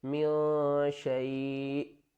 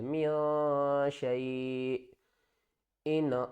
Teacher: last में थोड़ा सा झटका देंगे क्योंकि हमज़ा साकिन है